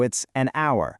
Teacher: If the H is totally silent, like in the word hour, we actually break the consonant rule and use an instead. Since we don't pronounce that H, the word essentially starts with an O vowel sound to our ears.